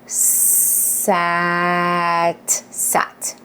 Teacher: Notice how I held each sound the s and the a without pausing or breaking in between them so they really connected. And then we just kind of squished it together really fast to say the word after that.